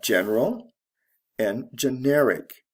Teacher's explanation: And the stress shifts from the first to the second syllable.